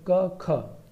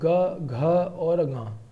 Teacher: ज्यादा इनम भारीपन है क और ख में कम भारीपन है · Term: अघोष